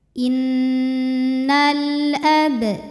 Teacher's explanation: maka cara bacanya lam dibaca jelas atau disebut dengan Idhar qomari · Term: alif lam qamariyah